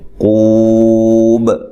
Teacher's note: وَيَعْقُو واو مدہ ہے، اور وقف کی صورت میں مد کر سکتے ہیں۔ قوب، اور با پہ قلقلہ کرنا ہے، وقف کی صورت میں واضح طور پہ قلقلہ ہونا چاہیے